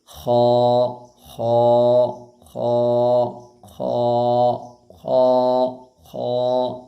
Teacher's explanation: गले का जो मुंह की तरफ वाला हिस्सा है वहाँ से खा निकलता है, खौ। ये पुर हरफ है, इसको पुर पढ़ना है।